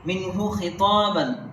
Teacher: نون ساکن کے بعد حروف اظہار میں سے حلقے میں سے ہا آیا ہے، یہ اس لیے یہاں اظہار ہوگا، یعنی ناک پہ آواز نہیں جائے گی